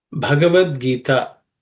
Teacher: In this, the first letter Bha is aspirated because it's the fourth letter in the Pa Varga. · the first letter B is aspirated